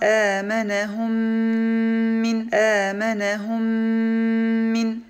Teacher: Notice that we pronounced a single Meem with a Shadda and Ghunna.